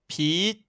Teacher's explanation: le son se coupe au moment où on commence à le prononcer, donc on l'entend à peine. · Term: T final